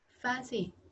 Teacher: Thế nhưng mà âm này là âm không có âm phờ, fancy thì lại không có thanh. Fancy ở đây thì lại không có thanh. Ok, mà chỉ có âm gió thôi, chỉ có giống như kiểu chữ S ạ.